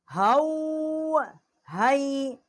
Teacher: یہ بڑی ہا ہے، اقصائی حلق سے اس کا مخرج ہے